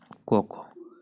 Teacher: अब बात कर लेते हैं क ख का, हम बात करते हैं कंठ से उच्चारण होता है क ख। क और ख जो है व्यंजन कंठ से उच्चारण होता है